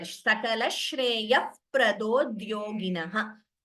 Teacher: Visarga followed by pa or pha. We pronounce the Upadmaniya there.